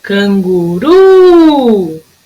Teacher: A sílaba tônica é o ru, que foi a que durou mais. Canguru! Se é a última sílaba, então eu chamo ela de palavra oxítona.